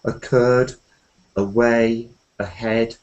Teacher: There's a whole set of these words which don't have any stress at the beginning.